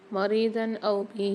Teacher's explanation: مریضاً او بہ، یہاں پر بھی ضاد پر 2 زبر ہیں، 2 زبر کی تنوین کے بعد الف آ رہا ہے، تو یہاں اظہار ہلکی والا قاعدہ ہوگا، غنہ نہیں کریں گے